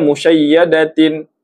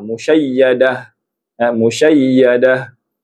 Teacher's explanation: Bila bersambung jadi sebutan dia ta. Bila berhenti, sebutannya menjadi huruf ha. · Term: ta marbutah